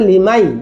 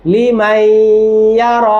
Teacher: লিমান ছিল, এখন হয়ে যাবে লিমাই, ইয়ার সাথে ঈদগাম হবে হালকা গুন্না।